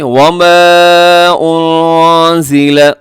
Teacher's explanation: آگے وما انزل، یہاں اخفا ہے، نون ساکن کی آواز کو چھپائیے گا ناک میں۔